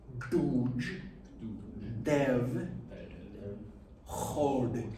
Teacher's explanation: The tongue is in the back of the mouth on the D.